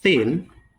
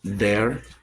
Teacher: In thin versus there and bath versus clothes, the difference is in voicing. Th is voiceless, z is voice.